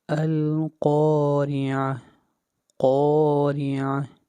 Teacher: قاف حروف مستعلیہ میں سے ہے، قاف کو موٹا پڑھیں گے